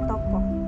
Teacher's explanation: ciri-cirinya tengah belakang dan bulat